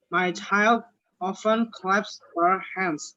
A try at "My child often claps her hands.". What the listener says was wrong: Oke, bagus sekali. My child often claps. Ngucapin often-nya udah bener ya.